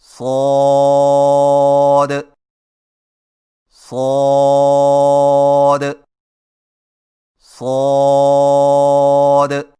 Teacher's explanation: زبان کی نوک کو ثنایا سفلی کے کناروں سے مضبوطی سے لگا کر اور زبان کے پچھلے حصے کو تالو کی طرف بلند کرتے ہوئے موٹی اور سیٹی جیسی آواز میں پڑھیں